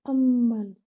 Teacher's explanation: That means most complete gunna. Hold the mim in your nasal passage for like most complete gunna.